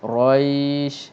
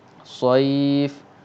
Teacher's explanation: ketika mematikan shin itu, lin itu dipanjangkan, maka bunyi dia roish. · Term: mad lin